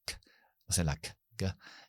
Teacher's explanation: lo puedes tocar con la zona atrás de la lengua, que es lo que hacemos cuando hacemos la K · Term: zona velar